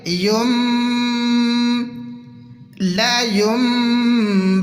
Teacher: یہاں پر ہم میم کو ریڈ کریں گے، نون کو سکپ کریں گے